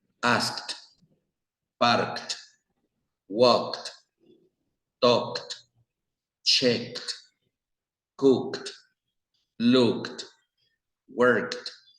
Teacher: Vean que no vamos a decir asked, parked, walked, talked, no. En lugar de decir toda la ed, la vamos a suprimir por T. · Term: final T sound